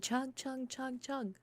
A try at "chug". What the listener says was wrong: Sounds a lot like you're saying chum.